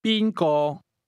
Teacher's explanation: The tones in who or whom go from the high level to the mid level.